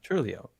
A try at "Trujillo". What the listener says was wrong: No, there's no L there. Yes, there is.